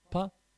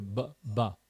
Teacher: If you take a p sound and you add some sound, you add some vocalization to it, you get ba, right? Pa, and then same pa, pa, but with a ba, ba, you're making a sound.